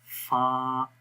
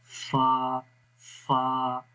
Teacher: فا کو ہم اس وقت پڑھ سکتے ہیں صحیح مخرج کے ساتھ کہ جب ثنایا علیا کے کنارے نیچے والے ہونٹ کے تر حصے پہ لگتے ہیں، جیسے کہ یہاں امیج کے اندر آپ کو نظر آ رہا ہے، تو یہ بالکل فا کا مخرج ہے۔